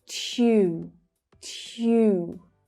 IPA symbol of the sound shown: j